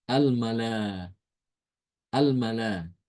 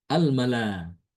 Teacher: Maka ketika wakaf ya, hamzah itu diganti dengan apa? Huruf alif. Karena yang sesuai dengan fathah adalah alif. Jadi dibacanya al-mala.